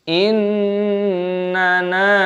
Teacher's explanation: yang pertama ini nunnya ini pendek, yang kedua baru panjang karena ada tanda alifnya